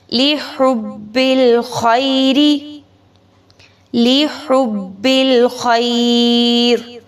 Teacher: را کو وقف کریں گے، ساکن کریں گے تو را کو باریک پڑھیں گے